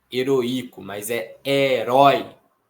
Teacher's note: esse ditongo já é um ditongo decrescente, porque ele vai da vogal mais forte para a vogal mais fraca